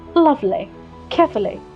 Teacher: The Americans really don't exaggerate the ly much. Keep your ly pronunciation in the end short and crisp.